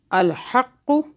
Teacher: قاف کی دو آوازیں ہوں گی کیونکہ قاف کے اوپر تشدید ہے